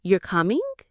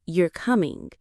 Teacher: you're coming with a rising tone is a question, but you're coming with a flat tone is a statement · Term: intonation